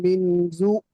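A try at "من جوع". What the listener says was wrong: মিন জু, টান দেন। জু, ও আলিফ, ও সাকিন ডান দিকে পেশ, ও মাদ্দা। মিন জু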